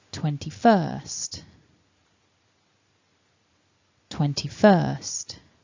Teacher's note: So you see there the stress is at the end of the word